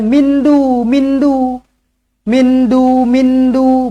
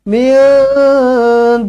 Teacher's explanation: ikhfa Hakiki dengungkan dua harakat